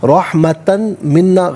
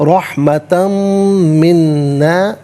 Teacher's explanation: تنوین کو میم کے ساتھ ملا کر میم کی آواز کو غنے کے ساتھ عطا کیا جائے گا